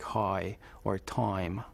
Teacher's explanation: Jewish speakers, for instance, are remarkable for pronouncing the I vowel, the I sound, in a word like high or time, further back in the mouth than other people do. So it sounds something like high or time.